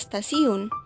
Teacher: dalam kata stasiun letup t itu diucapkan secara laminoalveolar perubahan letup apikodental T menjadi letutup lamino alveolar t karena pengaruh · Asimilasi progresif terjadi bila arah pengaruh bunyi itu ke depan, seperti perubahan bunyi T yang biasanya dalam bahasa Indonesia atau Jawa diucapkan secara apikodental, tetapi dalam kata stasiun, letup T itu diucapkan secara lamino-alveolar. Perubahan letup apikodental T menjadi letup lamino-alveolar T karena pengaruh secara progresif dari bunyi geseran lamino-alveolar S.